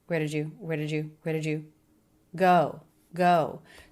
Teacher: The first three words of that, less clear, definitely flatten pitch, unstressed, until we get to the stress word go.